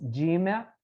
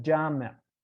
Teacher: the word for mosque is jimmy versus jammer so e versus ah